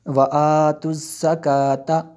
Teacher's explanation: زا کو دبا کے پڑھتے ہیں اور جو ہے اس کو باریک بھی کرتے ہیں